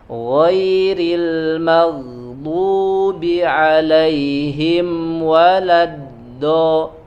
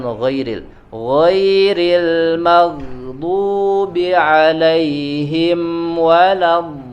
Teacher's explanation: yang dominan, ya, tekanannya yang kuat itu dari aqsal hafah, ya, dari sampingnya, bukan dari ujungnya.